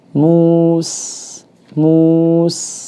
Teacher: kita panjangkan dulu supaya kelihatan dari perpindahan dari mim yang dhammah ke sin yang sukun dan tipis ya.